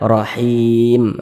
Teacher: yang tidak dibaca panjang maka hurufnya itu kita sukunkan ya ini kita berhenti di huruf mim huruf mim kan tidak dibaca panjang hurufnya kita sukunkan